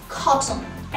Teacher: فلما يجي عندنا كلمة فيها ال T شوا N cluster بتبقى ال T بتقلب stop T.